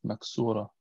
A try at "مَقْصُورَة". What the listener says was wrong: نعم، المقصورة بالقاف وليس بالكاف.